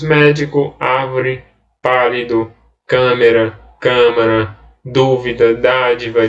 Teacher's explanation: serve gente palavras paroxítonas e as palavras proparoxítonas acento a tônica é a antepenúltima